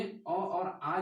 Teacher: स्वरों में अ और आ जो स्वर हैं इनका उच्चारण स्थान कंठ से होता है